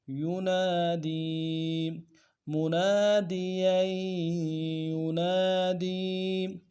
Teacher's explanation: دال کو یا کے ساتھ ملانا ہے، یا مدہ ایک اعتدال میں کھینچیں گے